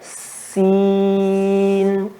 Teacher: pada huruf sin dan za dan so ada ketajaman suara. Maka tajamkan.